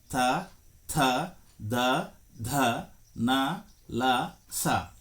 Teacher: ದಂತ ಅಂದರೆ ಹಲ್ಲು ಹಲ್ಲುಗಳ ಸಹಾಯದಿಂದ ಉತ್ಪತ್ತಿಯಾಗುವ ವರ್ಣಗಳನ್ನ ದಂತ್ಯ ವರ್ಣಗಳು ಎನ್ನುವರು